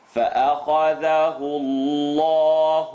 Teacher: The letter before the lam in Allah, la mushaddad lafzul jalala. The u makes the lam in Allah heavy.